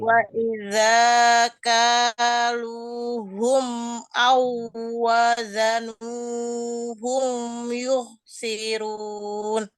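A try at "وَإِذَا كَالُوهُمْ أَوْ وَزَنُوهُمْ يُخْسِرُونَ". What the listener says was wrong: Ya, begitu.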